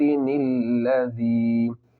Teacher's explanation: یا مدہ کو تھوڑا کھینچ کر پڑھیں گے